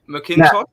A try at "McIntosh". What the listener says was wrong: McIntosh. Just the A is not there, yeah.